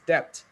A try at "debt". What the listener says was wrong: Not like this. When your lips are close together, you got it wrong. It has to be like this. Can I see your teeth again? Debt.